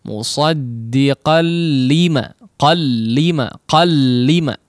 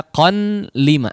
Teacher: Tapi cara bacanya langsung diidghamkan tanpa digunnahkan